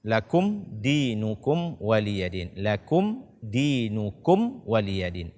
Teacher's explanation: Ada dua mim sukun di sini. Lakum setelahnya dal, ini adalah izhar syafawi.